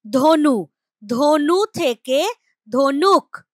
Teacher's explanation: এই যে ক টা চলে এসেছে অতিরিক্ত শব্দের শেষে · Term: অন্ত ব্যঞ্জনাগম